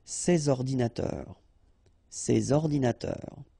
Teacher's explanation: so you should make the liaison between S and O